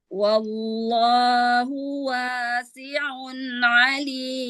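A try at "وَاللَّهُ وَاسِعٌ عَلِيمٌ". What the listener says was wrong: Wawnya suaranya jangan wa, wa. Rendahkan. Wallahu wasi'un alim. Ya, wasi'un alim. Jangan wa, ya, jangan wa.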